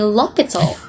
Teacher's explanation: French usually drop the H sound, so if you want the French accent, drop your H's.